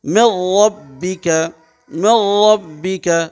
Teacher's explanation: ادغام تو ہو رہا، آواز ایک حرف کو دوسرے ملا رہے ہیں، آواز ناک میں نہیں جا رہی ہے